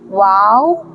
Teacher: दोनों होठ के दरमियान से अदा होता है